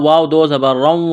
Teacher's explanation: را کے اوپر 2 زبر تنوین ہے تو را کو موٹا کرنا ہے۔ آگے واو مشدد ہے تو را کو واو کے ساتھ پلس کرنا ہے۔